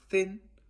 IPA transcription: θɪn